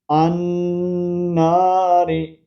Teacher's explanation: الف لام، یہ لام نہیں پڑھا جائے گا